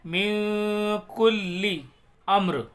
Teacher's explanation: یہاں پر غنہ ہم کر رہے ہیں کیونکہ کاف جو ہے یہ حروف اخفا کے 15 حروفوں میں سے آ رہا ہے، اس لیے یہاں پر ہم غنہ کریں گے، اخفا کریں گے.